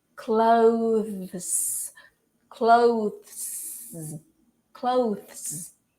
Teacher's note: It has the TH, which many people find difficult to say, and it also has the S, which is actually pronounced as Z. So you have to pronounce the TH, and right after you have to do the Z sound.